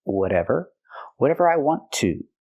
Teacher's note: We hear the T in whatever pronounced as a fast D because it's between vowels.